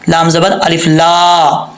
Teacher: لام کے آگے الف ہے، ایک الف کی مقدار اس کو لمبا کریں گے